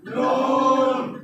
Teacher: 9 নম্বর মাখরাজ জিহ্বার আগা, তার বরাবর উপরে তালুর সঙ্গে লাগিয়ে নুন।